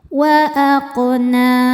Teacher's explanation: cara bacanya qof dipantulkan dengan pantulan yang kecil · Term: qalqalah sugro, qalqalah sughra